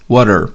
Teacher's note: Esse T tem o som do flap T, o som daquele R de Sara, porque está entre as vogais A e E.